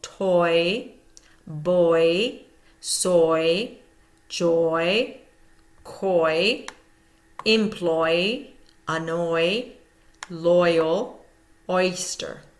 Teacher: So you're hearing again that oi sound, that diphthong oi, two sounds coming together to make oi.